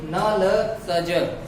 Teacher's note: आप बोलकर देखना, आपको आभास होगा, प्रतीत होगा कि न ल स ज ये बोलते समय ये वतर्च व्यंजन है और इनका उच्चारण करते समय आपकी जो जीभ है ये मसूड़े को स्पर्श करती है